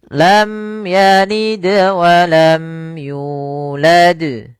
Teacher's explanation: Kemudian pelafal yalid walam. Di sini ada bacaan qalqalah, yaitu suara dalnya dipantulkan ya.